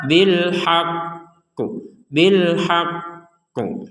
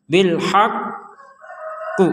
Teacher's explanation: ditekan dulu hak kemudian dipantulkan tapi jangan lama-lama Kalau lama-lama nanti salah juga bilhaq qu nah ini kelamaan Ya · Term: tekanan kemudian pantulan